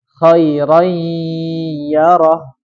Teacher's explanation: Ketika kita melebur, pas kita melebur itu ke huruf ya, maka hidung kita itu bergetar. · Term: idgham bi gunnah